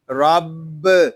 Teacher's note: را کو پر پڑھیں گے کیونکہ را کے اوپر زبر آ رہا ہے، با مشدد ہے، اس کو جماؤ کے ساتھ ادا کریں گے، اس کو رب اس طرح نہیں پڑھیں گے، اس کو پڑھیں گے رب۔